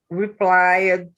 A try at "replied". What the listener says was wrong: Not plied. It's two syllables. Replied. There you go.